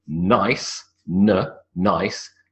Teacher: the n sound starts with the tongue on the alveolar ridge, n. All right? · The tip of the tongue sits on the alveolar ridge and you make a n sound. So if you say the word nice, n, nice, the n sound starts with the tongue on the alveolar ridge, n.